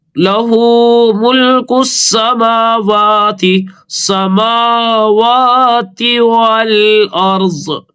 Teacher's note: الف اور لام نہیں پڑھیں گے کیونکہ سین کے اوپر تشدید ہے، کاف کو تشدید میں ملائیں گے سین میں.